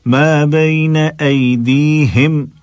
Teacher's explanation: ما بين أيديهم, أي پڑھا, اے نہیں پڑھا, ایدیہم نہیں ہے, ایدیہم نہیں ہے, ایدیہم سینے کے پاس سے ادا کرنا ہے ہا کو